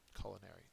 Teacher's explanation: culinary is an adjective first syllable is accented